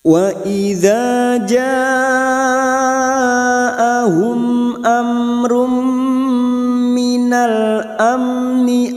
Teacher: Wa idza fathah bertemu alif dua harakat, wa idza mat bertemu dengan hamzah dalam satu kalimat, mat wajib mutasil. Mat wajib mutasil kita panjangkan 4 atau 5 harakat. Nah, mat wajib mutasil ini cabang dari mat far'i, ya, yang panjangnya tidak ada ukuran mutlak, boleh 3 sampai 6, tetapi dalam metode tilawati ukurannya 4 sampai 5, boleh 4 boleh 5.